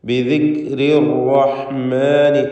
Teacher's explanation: തടിപ്പിച്ച് സ്വരഭാരത്തോടെ ഉച്ചരിക്കുക. ശദ്ദുള്ള റാ ആയതുകൊണ്ട് അതിന് തെക്രീർ വരാതെ സൂക്ഷിക്കണം. അർ എന്നുള്ള വിറയൽ വരരുത്. ബിദിക്രി റഹ്മാനി ഒറ്റ റാ മാത്രം ഉച്ചരിക്കുക.